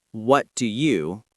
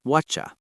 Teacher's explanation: Native speakers connect words. For example, what do you becomes whatcha.